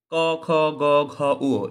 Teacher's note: এগুলো কণ্ঠ থেকে উচ্চারিত হয় এইজন্য এগুলোকে কণ্ঠ ধ্বনিও বলা হয়